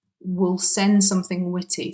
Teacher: so instead of saying we will it's reduced to wheel and then in fast speech it's reduced even further to will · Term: reduced version